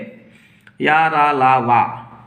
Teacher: या रा ला वा, इनके इनको अंतस्थ वर्ण भी कहते हैं। या रा ला वा इनका उच्चारण स्वर और व्यंजनों का मध्यवर्ती है और इनका उच्चारण करते समय वागेंद्रिय कुछ खुली रहती है। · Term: ईषत् विवृत